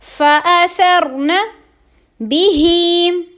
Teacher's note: یہاں پر ہی کو لمبا کریں گے، کھڑی زیر ہے